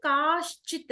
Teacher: ఇక్కడ మనం చూసాము స్త్రీలింగానికి ప్రథమ విభక్తిలో కే కాహ కదా సో క కి పక్కన కాచిత్ వచ్చేసింది కే కి కేచిత్ అయిపోయింది కాహ్ అని ఉన్నప్పుడు కాశ్చిత్ అయింది. కాహ్ ఉన్నప్పుడు విసర్గ శకారంగా మారింది కాశ్చిత్ అయింది